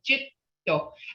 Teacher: you don't hear the first D in there because your tongue is on top of your palate